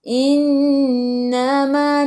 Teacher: Ala, baris mat bertemu dengan hamzah di bawah alif, mad jaiz 4 atau 5 harakat. Innama, nun ada sabdu, tekan ke dalam nun dan dengung 2 harakat wajib al gunnah